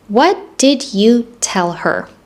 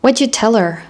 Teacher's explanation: And I also reduced did and connected it all together.